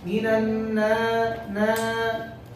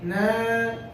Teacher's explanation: You're extending the ghunna of the noon to the alif, right? You should not add a ghunna to the alif.